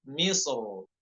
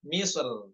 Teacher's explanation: Nah, ketika dia kata misrnya berharokat tanwin munawan, itu boleh wajhan. Boleh dua cara, yaitu tafkhim dan tipis ya. Namun yang tafkhimnya itu yang dibaca dengan tebal lebih diutamakan. Misr, Misr seperti itu ya.